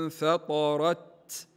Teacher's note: النون هنا تلاحظون في المصحف انها لا تحمل فوقها حركه الحكم اذا يكون الاخفاء مع الغنه تقرا الكلمه هكذا انفطرت الراء متحركه بالفتح فلا بد من تفخيمها